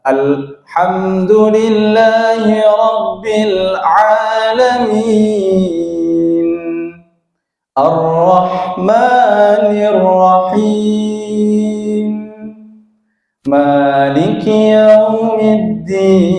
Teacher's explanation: untuk pengucapan di akhir, ya, mim nun, nun, ya, itu agak ditahan sebentar.